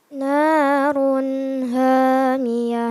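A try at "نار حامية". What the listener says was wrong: Ulang, tidak keluar anginnya. Terasa tidak angin keluar? Narun. Di tenggorokan. Tengah tenggorokan. Ha, ha, ha. Jadi dipaksa keluar anginnya.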